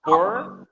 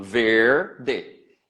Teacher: eu sou do interior de São Paulo então o r vai ser puxado